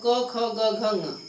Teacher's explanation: प्रथम और द्वितीय में क और ख ये दोनों अघोष की श्रेणी में आएंगे